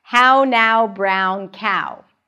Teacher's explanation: notice how we have to transition from the /æ/ to the /ʊ/, right, get to the /ʊ/ sound. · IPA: /æʊ/